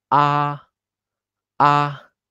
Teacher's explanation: 5 is very high volume of your voice, and 1 is very low. So tone 1 is always very high of your volume and it's flat.